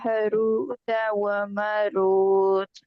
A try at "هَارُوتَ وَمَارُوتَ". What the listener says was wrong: ہاروت و ماروت۔ جلدی نہیں کرنی ہے جلدی نہیں کرنی، جہاں پہ مدات آتی ہیں، جہاں پہ حرف مد آتا ہے، الف مد، واو مد، یا مد، ٹائم دے کے اس کو پورا کر کے پڑھا کریں، ٹھیک ہے؟